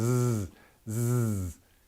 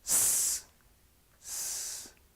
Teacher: So you put your teeth together and you just sort of blow air, and for Z you vibrate your vocal cords